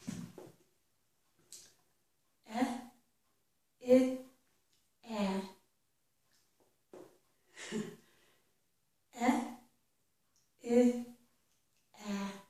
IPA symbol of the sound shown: ɛ ɪ æ